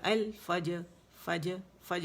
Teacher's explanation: را جو ہے اس کو پہلے تو اس کو ول فج فج یا ال فج فج فج, ہاف زبر ساؤنڈ ہوگی, جیم کی قلقلہ جو اس پہ بنے گا ہاف زبر ہوگی